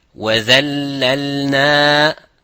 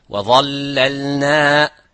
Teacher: The only thing is difference is empty mouth, full mouth, but the same makhraj.